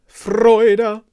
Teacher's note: a pretty strong rolled r